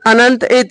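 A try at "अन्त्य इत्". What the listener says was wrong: अनंत इत नहीं, अंत इत।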